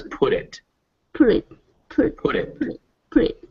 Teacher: make sure you really get that d sound